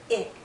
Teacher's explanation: our lips are more relaxed when we say I we go from tense to more relaxed e i e i and our mouth opens a bit more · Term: short sound I